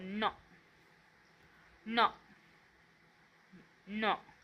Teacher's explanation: हे जे आहेत ते अनुनासिक आहे ज्यांचा उच्चार नाकातून होतो · हा वांगमय मधला न आहे याचा उच्चार नाकातून होतो